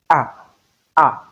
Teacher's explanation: Notwithstanding the structure of this phonetic symbol, it is a monophthong, a single vowel sound. It is not a combination of two sounds. So what we have there is a, a, as simple as that.